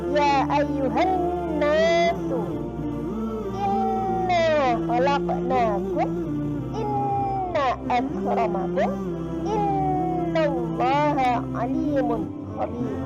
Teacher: ketika kalian membaca nun yang bertasydid, itu dibaca gunnah, mendengung 2 harokat